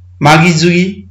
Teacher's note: म ध्वनि चाहिँ ज मा परिवर्तन भयो